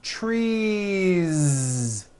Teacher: It's not trees with an unvoiced S. It's trees with that voiced ending.